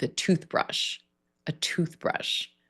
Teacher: The stress will fall on that first syllable in a compound noun.